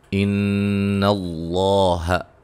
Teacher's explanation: ان اللہ نون مشدد پہ غنہ ، لفظ اللہ کے لام کو موٹا، اس سے پہلے زبر